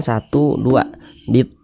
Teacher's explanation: tho dibaca panjang Mad thbii'i panjangnya dua harakat nah dua harakat itu kira-kira sepanjang dua ketukan 1 du Bitu